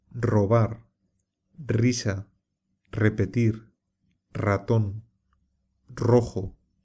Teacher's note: Esto sucede porque es un sonido algo difícil para las personas cuyo idioma materno no es el español, y también porque la R se pronuncia de varias formas según donde se encuentre. Al principio de la palabra, o cuando está precedida de L, N o S, se pronuncia como una vibración fuerte